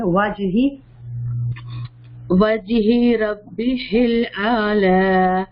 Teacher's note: وجہی کو لمبا نہیں کریں گے, کھڑی زیر نہیں ہے